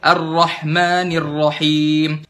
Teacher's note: Kalau berlebihan pada sifat, contoh berlebihan pada sifat hamas di huruf ha.